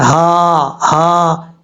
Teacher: حمزہ ہا اس حلق سے ادا ہوتے ہیں جس کا تعلق سینے کے ساتھ ہے